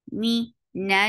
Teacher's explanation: Attach with noon, and this is Akmal gunna, because there is noon with tashdid. Me, na will be 2 counts long too, because that is Madad Tabi'i.